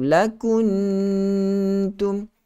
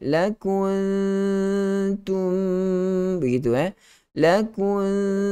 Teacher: kita sembunyikan bunyi nun itu ke dalam huruf ta. Memanglah betul kita kena get ready huruf ta itu, tapi bukanlah kita masukkan secara totally, sebab sembunyi saja.